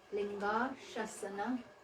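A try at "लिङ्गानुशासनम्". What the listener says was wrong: Linganushasanam. Shasanam. Ma is also there.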